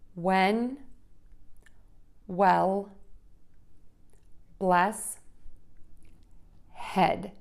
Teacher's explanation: For the short eh your mouth is a little more open and think of the tip of your tongue behind the back of the bottom front teeth